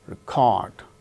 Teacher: Second syllable gains stress when it is used as verb, record.